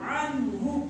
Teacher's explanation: अब यहाँ पर हमने अन्हु नहीं पढ़ना है क्योंकि नून साकिन के बाद हुरूफ हल्की में से हा है, सॉरी हा है, इस वजह से हम इसको वर पढ़ेंगे, इजहार करके पढ़ेंगे, गुन्ना नहीं करना।